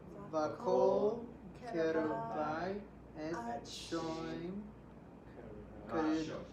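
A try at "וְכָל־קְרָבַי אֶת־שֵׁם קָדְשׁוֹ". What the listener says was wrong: Shem, notice the sere, et shem kadsho.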